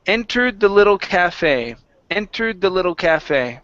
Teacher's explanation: entered with the stress at the very beginning